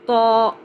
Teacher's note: طا موٹا ہے اس لیے اس کی آواز AWW والی ہے